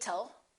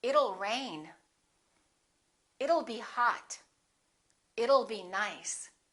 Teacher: let's change that T into a fast D and say it'll